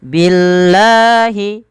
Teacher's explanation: Apabila ada lafal Allah didahului dengan huruf kasrah maka lamnya dibaca tipis